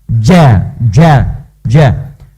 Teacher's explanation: Ja itu hurufnya huruf hentakan, ja, jadi dari dalam, infijar, jadi dari dalam dikeluarkan.